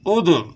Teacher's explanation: ادع، دال میں قلقلہ ہوگا